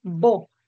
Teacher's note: para articular el primer sonido cierras los labios y luego explota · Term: oclusivo